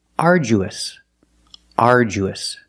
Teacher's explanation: The du makes the J sound like jump and juice.